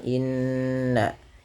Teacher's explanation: Kemudian yang selanjutnya yaitu innallaha tahan pada lafal bunyi nun yang berharakat tasdid karena ia bacaan gunah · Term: gunnah